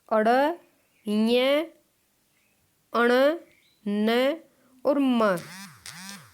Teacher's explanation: अड़ ञ अण न और म इनका उच्चारण स्थान नासिका से होता है